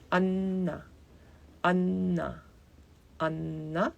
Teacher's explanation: So it has two N it means there is an invisible third N. So you keep the tongue on the teeth and it's a little bit lengthened.